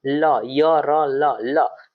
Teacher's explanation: ल का उच्चारण स्थान आपका हो जाएगा दंत क्योंकि दंत से हम लोग ल को बोलते हैं